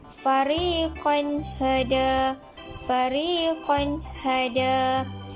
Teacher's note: apabila tanwin dua baris di atas bertemu dengan huruf H, maka ia dibaca jelas